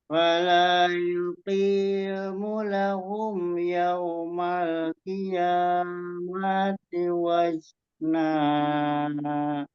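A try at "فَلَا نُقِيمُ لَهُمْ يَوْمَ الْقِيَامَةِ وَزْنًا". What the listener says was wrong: Ya, diakofnya lebih di ini lagi. Di qafnya kurang dalam ya. Itu kalau hampir-hampir ke kaf dia.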